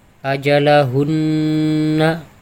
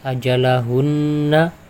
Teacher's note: di sini lama ajalahunna karena ini adalah ghunnah musyaddadah